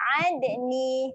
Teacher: Jaga makhraj huruf ain. Tekan di tengah kerongkong.